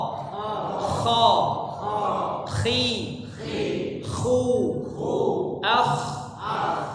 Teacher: huruf k ya masih di tenggorokan yang atas atau tenggorokan bagian luar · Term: huruf Kho